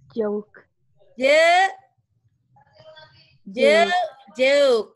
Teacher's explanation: O-nya diganti diftong E-U